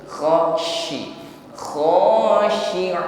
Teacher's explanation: huruf syin memiliki sifat tafasyi Udara yang dikeluarkan ini meluas di dalam mulut kita